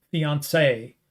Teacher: a ridiculous heavy stress on the final syllable